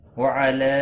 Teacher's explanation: مد منفصل ہے 3 الف کے برابر کھینچ کر پڑھیں گے